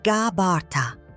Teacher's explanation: pronounced gabarta with emphasis on the second syllable